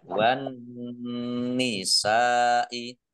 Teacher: Wan nisa'i alif lam samsiyah karena tidak dibaca langsung masuk ke huruf berikutnya yaitu nun, ditandai nunnya ada tasdidnya, nunnya dibaca double dan dibaca runah atau mendengung. Ya, wan nisa'i biar mendengung maka ditahan. Sin fathah alif mat tobi'i tetapi karena bertemu dengan huruf hamzah dalam satu kata maka menjadi mat wajib muttasil.